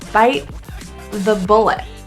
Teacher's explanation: The T's in bite and bullet are not released. They're actually pronounced as a glottal T or a glottal stop. That means it's stopped in the throat.